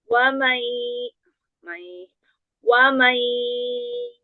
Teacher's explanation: Irgom gunanya udah lebih bagus, masuk alirannya ke hidung ya, jadi nggak banyak dari mulut.